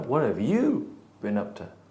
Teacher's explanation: So I'm stressing the word you, and if I stress it, then I don't contract. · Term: sentence stress